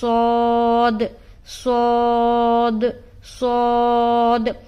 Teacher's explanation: صاد کو ہم موٹا کر کے ادا کرتے ہیں. اس میں بھی سیٹی کی سی آواز سنائی دے گی. اب آپ سوچیں گے سین میں بھی سیٹی کی سی آواز آتی ہے، تو دونوں میں فرق یہ ہے کہ سین کو ہم باریک ادا کرتے ہیں اور صاد کو موٹا کر کے ادا کرتے ہیں. · صاد کو حرف صفیریہ کہتے ہیں کیونکہ اس میں ادا کرتے وقت سیٹی کی سی آواز آتی ہے · صاد کا جو مخرج ہے وہ ہے زبان کی نوک اور ثنایا سفلا کا کنارہ، اور کچھ حصہ ثنایا علیا کا بھی ملتا ہے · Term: حرف صاد